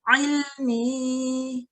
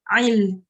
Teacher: So the ayn is quite tricky, and in the back of your throat should be tightening slightly.